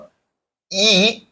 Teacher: ई अग्रस्वर माना जाता है